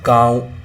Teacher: तो यहाँ हमने मुख से भी हवा निकल रही है और नाक से भी हवा निकल रही है, तो उच्चारण, इसके उच्चारण के समय हवा नाक और मुख दोनों के दबाव से बाहर निकलती है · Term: अनुनासिक